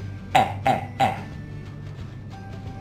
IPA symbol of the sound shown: e